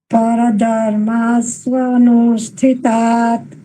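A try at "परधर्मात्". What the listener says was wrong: પરધર્માત તકાર સંભળાવવું જોઈએ. પરધર્માત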